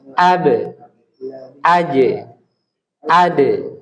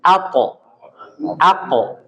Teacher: dua huruf ini po dan qaf ini dia dibaca dengan tafkhim, isti'la. Jadi diangkat pangkal lidahnya. Pangkal lidah ya, yang di belakang ini, pangkal lidah ini kita angkat sehingga suaranya itu tebal.